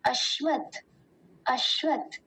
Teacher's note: तालव्य सकार का ध्यान देंगे बहुत बार बोलने में ये सकार हो जाता है अस्वत हो जाता है